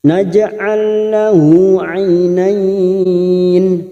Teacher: Namanya idgham mislain. Hanya masuk kata huruf lam yang kedua tanpa mendengung, tanpa ditekan lama-lama